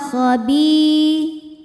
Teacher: Bi dihukumi dengan mad tabi'i dhahiri sebab ada ya sukun didahului baris kasroh, maka huruf ba ini kita panjangkan 2 harokat saja